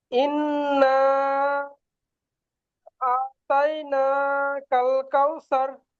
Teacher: ইন্না, এই না টানটা দিতে হবে।